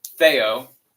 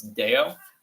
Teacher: if you say the TH sound with more of a heavy D, a heavier consonant, it becomes Deo. But if you say Deo and Theo, you notice that your tongues are kind of making a similar click.